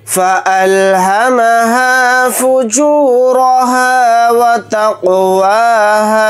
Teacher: वाव को जल्दी पढ़ेंगे, ता को क़ाफ साकिन के साथ मिलाकर पढ़ेंगे, क़ाफ के ऊपर जज़म है तो क़ाफ के अंदर क़लक़ला करके पढ़ेंगे, क्योंकि क़ाफ हुरूफ़ क़लक़ला के हुरूफ में से एक हर्फ है।